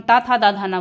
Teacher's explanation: जीवा हमारी ऊपर की ओर दंत पे स्पर्श करती है। ता था दा धाना बोल के देखिए, हाँ जीवा कहाँ जा रही है, दांत पे जा रही है ना, ऊपर वाले दांत पे।